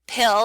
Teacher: So if you say the word pill and put your fingers in front of your mouth, you should feel a big puff of air on the P on pill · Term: aspiration